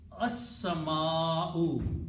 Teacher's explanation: And in the pronunciation, seen will be pronounced twice. Asr lam will not be pronounced, so it will become asmau.